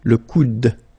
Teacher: you don't insist on this final e, it only gives you the sound of d at the end